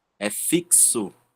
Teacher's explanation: A palavra fixo, né? A gente vê um som de ks de fixo